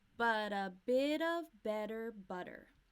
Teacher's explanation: we're linking and that becomes a flap T or D sound